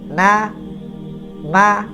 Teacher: Ini gunah yang mana durasi gunahnya paling rendah paling sedikit dia adalah Nun yang mutahark dan mim yang mutaharik yang berharakat contoh na ma kita tidak bisa mengatakan tidak ada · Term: gunah anqas